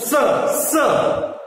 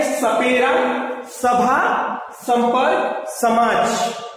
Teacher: जो दंतव्य स है वो एक स होता है, दांत के पास से बोला जाता है, दांत के पास आप जीभ रखेंगे